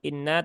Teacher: tidak mungkin Nun itu tidak masuk ke rongga hidung karena memang dia sudah defaultnya begitu Jadi tidak perlu dikhawatirkan itu